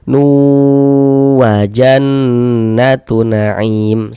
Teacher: Nah, jadi bunyi tanwinnya dimasukkan ke huruf wau, melebur ke huruf wau sehingga dibaca nu. Kemudian di bagian nunnya itu suaranya itu kita tahan nih, kita panjangkan sebentar kira-kira sepanjang dua harakat · di bagian nu-nya itu suaranya itu kita tahan nih, kita panjangkan sebentar kira-kira sepanjang 2 harokat. Nu wa jannatu na'im, seperti itu. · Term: idgham ghunah, ghunah, idgham bi gunnah